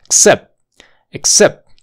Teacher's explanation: esa t va a desaparecer porque está entre dos sonidos de consonantes en este caso la p y la th y la th